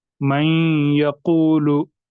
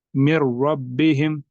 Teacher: नून साकिन के बाद या आ रहा है तो यहाँ पर गुन्ना होगा। मैं यकूलु, यहाँ पर आ रहा था रॉ, मिर रब्बिहिम, यहाँ पर गुन्ना नहीं होगा।